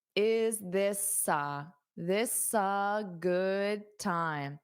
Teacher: So hold up that S to link to the A.